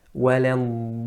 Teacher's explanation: It's just وَلَنْضَا. The lips or the mouth opens normally with the alif. There's no rounding of the lips. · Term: alif mufakhama